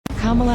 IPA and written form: ˈkɑːmələ (Kamala)